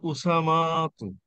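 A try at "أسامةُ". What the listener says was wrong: উসামাতু, উসামাতু টান নাই, উসামাতু।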